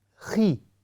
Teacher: حالانکہ یہ ہیوی لفظ ہے لیکن جب اس کی نیچے کسر آئے گی، زیر آئے گی، تو اس کی ادائیگی خی ایسی بن جائے گی. ہم خوی نہیں پڑھیں گے، یہ غلط ہوگا.